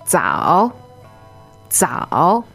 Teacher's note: the Z in pinyin is not just a Z-Z sound. It's actually a D-Z sound